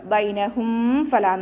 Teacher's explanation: മീം സാക്കിനക്ക് ശേഷം ബ മീം എന്നീ അക്ഷരങ്ങൾ ഒഴിച്ചിട്ടുള്ള ഏതക്ഷരം വന്നാലും നമ്മൾ മീം സാക്കിനെ വ്യക്തമാക്കി മണിക്കാതെ ഓതികൊടുക്കുക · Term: ഇഹാർ